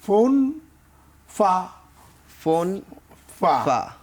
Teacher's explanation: ফোন চাইলে আমরা দুই ঠোঁট দিয়ে পড়তে পারি ফোন, ফোন কিন্তু ফা বলার সময় উপরের দাঁতের আগা, নিচের ঠোঁটের পেট লাগিয়ে বলতে হবে। জি, তাহলে আমরা কি ওই যে উপরের দাঁতের আগা দেখতে পাচ্ছি, নিচের ঠোঁটের পেট লাগিয়ে ফা উচ্চারিত হবে।